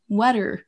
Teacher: Enfin, en fin de mot, ce n'est pas tous les mots, mais celui-ci, vous n'entendrez pas water, water, comme c'est qu'un R à la fin, mais water. Vous entendez, je ne prononce pas de R à la fin. Les Britanniques vont dire water.